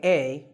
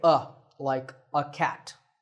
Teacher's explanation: in natural speech we don't say a we say uh